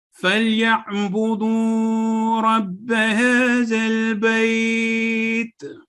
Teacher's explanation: اب یہاں پہ ہم نے وقف کیا بیت پر، تو ہم نے اس کو 2 سے 4 سیکنڈ تک 4 سے 6 سیکنڈ تک لمبا کیا